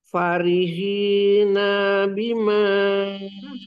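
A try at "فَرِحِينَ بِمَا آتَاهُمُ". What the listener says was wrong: Nanya pendek. Nanya pendek. Farihina bima. Nanya pendek.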